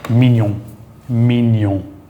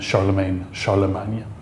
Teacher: Like filet mignon, or like in filet mignon. GN, almost always nya, like in Charlemagne, Charlemagne.